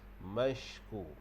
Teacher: huruf shin tu pastikan dia tafashi, berhamburan udara. Jadi shin ini makhrajnya adalah di tengah lidah. Mashku. Jadi shin dia punya sifat dia adalah tafashi, jadi berhamburan udara.